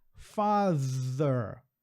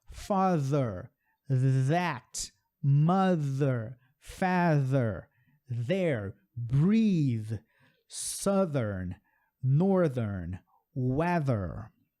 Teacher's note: soprei com a língua entre os dentes, mas fiz um som com a garganta. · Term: TH com voz